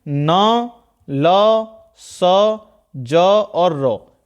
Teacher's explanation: न, ल, स, ज, र, यानी कि ऊपरी दांत के मसूड़ों से, यानी कि जीभ ऊपरी दांत के मसूड़ों को टच कर रही होगी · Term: वत्स्य व्यंजन